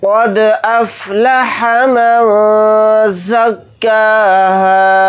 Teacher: क़ाफ़ को दाल साकिन के साथ मिलाकर पढ़ेंगे, दाल के ऊपर जिस्म है तो दाल के अंदर क़लक़ला करेंगे, क्योंकि इसमें क़लक़ला का कायदा हो रहा है।